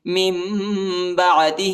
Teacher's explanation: اس کو جو ہے نون نہیں پڑھیں گے، ٹھیک ہے، میم کی آواز نکالیں گے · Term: اخفا